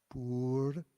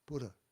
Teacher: It's not pur, and the R is reflex. The tongue goes up, pura. It's almost a D sound as we think in English, pura.